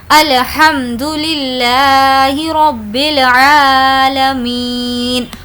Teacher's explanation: ہم یہاں پر الف کو اسکپ کر رہے ہیں اور با کو لام کے ساتھ ملا رہے ہیں